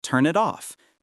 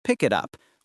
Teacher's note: The final consonant of one word connects to the first vowel of the next word. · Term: linking